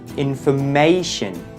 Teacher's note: the stress is on the third syllable